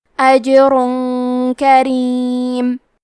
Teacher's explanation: کلمت کریم میں حرف الرا کے نیچے زیر ہے، لہذا یہاں را کا حکم ہے ترقیق، تو ہمیں حرف الرا کو پتلی آواز میں پڑھنا ہے · اخفاء کا معنی ہے چھپا دینا، تو ہم تنوین کو چھپاتے ہوئے اور غنہ کے ساتھ یہ حکم کو ادا کریں گے